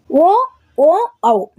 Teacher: ಇವು ಕಂಠ ಮತ್ತು ತುಟಿ ಅಂದ್ರೆ ಓಷ್ಟ್ಯ ಇವುಗಳ ಸಹಾಯದಿಂದ ಹುಟ್ಟುತ್ತವೆ ಹಾಗಾಗಿ ಇವುಗಳನ್ನ ಕಂಠೋಷ್ಟ್ಯ ಅಂತ ಹೇಳ್ಬಿಟ್ಟು ಕರೀತಾರೆ ವ ಈ ಅಕ್ಷರವು ಹಲ್ಲು ದಂತ